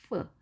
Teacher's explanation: 우리말의 피읍과는 다르게 발음을 하는데요. 위에 치아 앞니 두 개를 아래 입술 위에 살짝 댄 상태로 입술은 열린 상태로 발음을 하는 것이죠